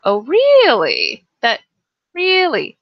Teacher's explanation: the little hook at the end we go up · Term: questioning tone